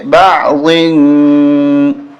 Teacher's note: اخفا کریں گے ناک میں آواز چھپائیں گے